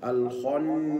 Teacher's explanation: وهو أيضا مرقق في الحالتين ففي حالة الوقف نقول هكذا الخناس ولا بد أن يأتي همس السين حيث أنه من حروف الهمس في النطق فلا أقول هناك خطأ شائع أقول الخناس وكأنه ليس